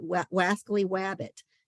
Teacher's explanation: To say the L like a W is an articulation disorder, just like Elmer Fudd says that wascally wabbit, that's an articulation disorder. To replace the R with a W is an articulation disorder.